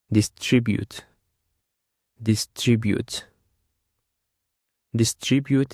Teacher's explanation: It consists of 3 syllables actually, and the stress is on the second syllable.